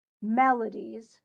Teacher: melodies is definitely stressed on the first syllable